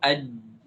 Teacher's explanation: suara itu tidak mengalir sama sekali tidak mengalir itu sifatnya namanya syiddah seperti kita ucapkan misalnya ab ab atau ad atau A atau